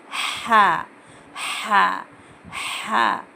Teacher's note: हा की आवाज़ पहले हवा बाहर निकलना, उसके बाद हा की आवाज़ आना